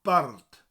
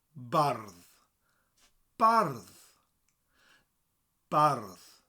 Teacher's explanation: And they say here that it comes from the word bardd in Welsh, which makes total sense, because bardd means poet. The only difference is that double D, and you roll the R. So bard becomes bardd.